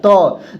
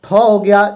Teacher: त वर्ग का उच्चारण स्थान दंत होता है